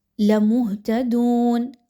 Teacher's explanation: ہا پر جزم کی علامت موجود ہے، ہا کو باریک کر کے پڑھیے